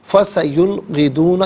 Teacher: یہاں نون ساکن کے بعد غین ہے، حرف حلقی ہے، تو لہٰذا یہاں پر اظہار کریں گے، غنہ یا اخفا نہیں کیا جائے گا